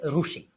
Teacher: এই যে রি, এটাকে বিশেষ করে পশ্চিমের লোকেরা মানে গুজরাট, রাজস্থান, মহারাষ্ট্র, এরা রু উচ্চারণ করে